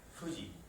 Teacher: el sonido es bilabial, Fuji. Casi no muevo los labios.